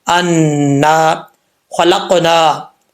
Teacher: خا حروف مستعلیہ میں سے ہے، اس کو پر پڑھا جائے گا